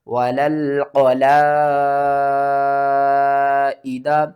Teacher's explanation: مد متصل ہے، قرآن پاک میں یہ بڑی مد بھی کہلاتی ہے، اس کو آپ نے 5 الف کے برابر کھینچ کر پڑھنا ہے